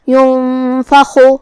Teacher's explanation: ينفخ جو کہ یہاں حرف الخا ہے، خا کی ادائیگی حلق کے اوپر والے حصے سے ہے. خا حروف التفخیم میں سے بھی ہے تو ہمیں اسے بھاری آواز میں پڑھنا ہے.